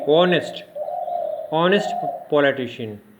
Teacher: Honest politician. So H is not being pronounced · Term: silent H